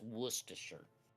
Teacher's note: You're adding an R when you don't need to add the. Even though the R is there, you don't pronounce the R.